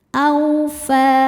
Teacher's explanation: hukumnya adalah harfulin sebab ada wau sukun sebelumnya fathah. Cara bacanya cukup dilembutkan atau dilunakkan.